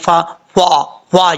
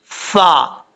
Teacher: اوپر والے دانتوں کا کنارہ نیچے والے ہونٹ کی تری والی جگہ پہ لگے تو فا پڑھا جاتا ہے۔ بعضوں کا ہونٹ گول کر کے پڑھتے ہیں فا، فا، یہ غلط ہے۔